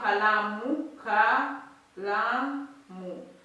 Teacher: Shada inatiliwa katika silabi ya pili.